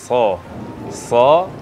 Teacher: mengucapkan huruf Shad harusnya tidak perlu membulatkan bibir jadi enggak perlu SH jadi SH SH ujung lidah kita ini